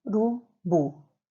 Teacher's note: acertou quem pensou na sílaba bu a sílaba mais forte é a última